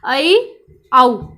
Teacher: हमारा मुख आधा खुला रहेगा, जैसे कि अ, ऐ या औ हम कह सकते हैं। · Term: अर्धविवृत